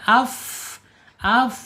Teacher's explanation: Kalau fa ini ada di ujung ujung gigi siri atas menyentuh perut bibir bagian bawah. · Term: alhams